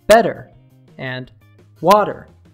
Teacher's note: the T sound in better and water has vowel sounds on both sides of the T, and both are stressed on the first syllable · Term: flap T